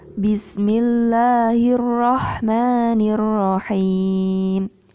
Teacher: lafaz Bismillah itu lahnya itu panjangnya 1 ayunan, tidak lebih dari 1 ayunan.